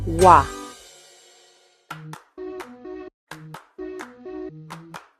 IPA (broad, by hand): wa